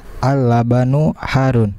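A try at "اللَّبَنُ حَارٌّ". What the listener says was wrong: Al-labanu pendek semua ya, bukan al-labanu tapi pendek semua ya. Al-labanu pendek semua, silakan.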